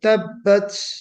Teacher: ہمس اتنے غلو کے ساتھ ہو رہا تھا کہ اس میں سیٹی کی آواز آ رہی